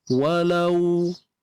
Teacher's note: untuk lau muncung bibir. Wa muncung, lau pun muncung.